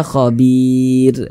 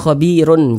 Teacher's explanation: kita berhenti tepat di huruf ro huruf ro tidak dibaca panjang Makanya kita sukunkan